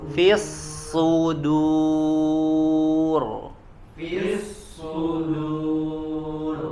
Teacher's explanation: Tebal ya. Huruf shadnya tebal, kemudian huruf dalnya di sini tipis ya.